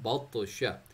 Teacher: अब तो को बाउंस पे पढ़ना है, हैवी पे पढ़ना है